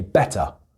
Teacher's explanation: I pronounce the T, but the last R I don't pronounce. But in American English, that is pronounced better.